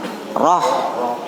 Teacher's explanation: ro bukan monyong tapi bentuknya o. Jadi setiap yang huruf o itu tebal.